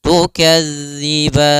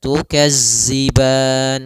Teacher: Maka latihannya agar tidak terbaca dengan huruf zai, itu ujung lidah kita menempel dengan gigi seri atas sehingga terdengar dengan sempurna untuk makhraj daripada makhraj huruf zal